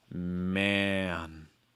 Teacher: before the end, I'm adding a heavy breath out of my nose.